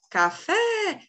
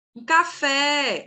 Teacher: todas essas palavras, independente do tamanho delas, possuem a última sílaba como a tônica.